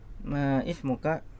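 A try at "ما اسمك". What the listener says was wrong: Ya, disambung ya. Mas muka gitu.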